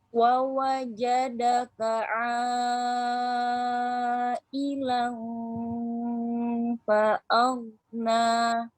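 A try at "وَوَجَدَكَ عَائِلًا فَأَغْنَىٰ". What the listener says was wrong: Jangan o, a, ke samping, a.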